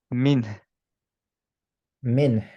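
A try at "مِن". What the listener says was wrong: মিন। খালি পিছে চলে যাচ্ছে আপনার, হ্যাঁ? টাংটা। ওইটা যাবে না খালি। মিন, মিন।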